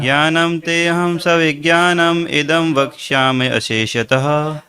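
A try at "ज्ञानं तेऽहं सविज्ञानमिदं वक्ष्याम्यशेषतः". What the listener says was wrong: देखिए वक्ष्याम्य अशेषतः से बोलना होगा। वक्ष्याम्य, वक्ष्याम्य शेषतः, नहीं तो वो अलग से सुनाई पड़ रहा है। ज्ञानम तेहम सविज्ञानम इदम वक्ष्याम्य शेषतः।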